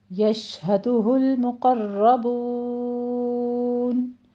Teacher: یش شین پہ تفشی ہوگی، آواز پھیلے گی